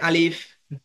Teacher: আমি যখন আলিফ বলেছি মুখ দিয়ে হালকা একটু বাতাস বের হয়েছে